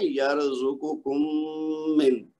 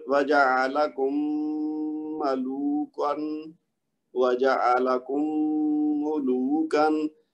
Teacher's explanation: میم کی آواز میم کے اندر مکس ہو کے ایک بن جائے گی، لیکن لمبا کرنا ہے اس کو